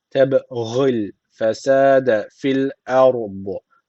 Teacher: harfi cezim almış kalkale tecviti var. Birazcık vurguluyoruz.